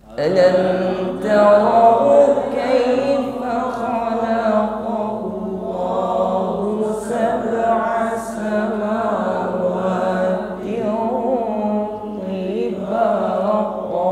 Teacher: Tin kasrah tanwin berhadapan dengan huruf po, ada hukum ikhfa. Tin kasrah tanwin kita samarkan pada huruf po dengan bunyi dengung. Namun di sini bunyi dengungnya tebal karena huruf po ini huruf isti'la yang bunyinya tebal. Jadi bukan sekedar samawati tiba, samawati tiba.